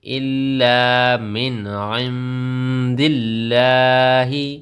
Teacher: یہاں پر لفظ اللہ کی لام سے پہلے زیر ہے تو یہ باریک پڑ جائے گی